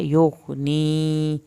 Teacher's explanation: غائن کو ہلانا نہیں ہے، یا کی یہ والی یا ساکن اس کو کھینچنا ہے